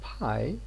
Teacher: after the release of the lip closure there is a moment of aspiration which means a period of voicelessness that affects the voicing of the vowel